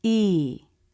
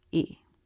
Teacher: when stressed the vowel has the up down shape of a stressed syllable